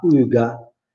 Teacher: la U in milanese normalmente si dice U, si pronuncia U alla tedesca, alla francese.